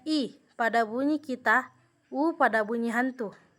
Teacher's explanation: sebagai berikut a bunyi tinggi yaitu bunyi yang dihasilkan dengan cara posisi lidah meninggi mendekati langit-langit keras